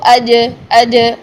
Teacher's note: اوپر زبان جو ہے وہ اوپر تالو کی لگے گی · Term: قلقلہ